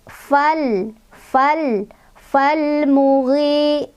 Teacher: Ketemu lagi sama alif lam qamariyah karena ada alif yang nempel di fa, alif lam bertemu dengan huruf qamariyah yaitu mim. Cara bacanya Lamnya dibaca jelas.